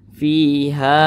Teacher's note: ke atas dibaca panjang ha dibaca panjang fiha panjangnya masih sama Mad Thobi'i itu panjangnya dua harakat atau kira-kira dua ketukan